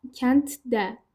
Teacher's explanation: Yəni d samiti t-yə keçib.